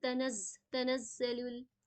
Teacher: جیسے زا میں ہم پراپر اس کی ساؤنڈ نکالیں گے. زا میں نا تھوڑی سیٹی کی صفت پائی جاتی ہے تو اس میں سیٹی جیسے ساؤنڈ آئی ہو کہ تنزل. پھر یہاں پہ دیکھیے مد آ گئی ہے تو اسے پراپر کھینچیں گے پورے 4 کاؤنٹس کے لیے.